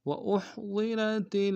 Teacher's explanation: ہا کو گہرائی سے ادا کریں گے، ضاد کو موٹا ادا کریں گے، را کو موٹا ادا کریں گے۔